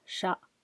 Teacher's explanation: the last letter is low in tone and non-aspirated.